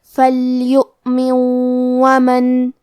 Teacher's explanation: کلمت ومن واو حروف الادغام بغنہ میں سے ہے تو ہم یہ نون ساکن کو واو میں ملا کے غنہ اور تشدید کے ساتھ یہ حکم کو ادا کریں گے